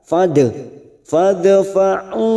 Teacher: sukun qalqalah sugra karena mati asli di tengah kalimat. Jangan lupa dipantulkan. · Ada mat yang bertemu dengan hamzah di lain kalimat, mat jaiz munfasil. 4 harokat kita panjangkan